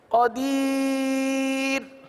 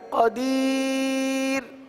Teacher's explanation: را ساکن سے پہلے یائے ساکنہ جب بھی آئے گا تو را کو ہمیشہ باریک پڑھیں گے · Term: را باریک